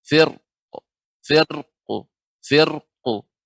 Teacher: Ra dibaca dengan tebal ketika waqaf dengan sukun.